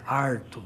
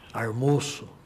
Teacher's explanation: o famoso R retroflexo, que é típico da área caipira